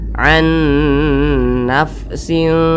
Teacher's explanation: cara membunyikannya itu disamarkan kemudian juga diengungkan nah karena dia a maka ini kan bunyi nunnya ini makf · cara membacanya itu samarnya itu dengan dengungnya itu lebih seimbang begitu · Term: Ikfa Hakiki, ikhfa hakiki ausat